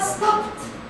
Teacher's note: We pronounce it t. Le ed est prononcé t.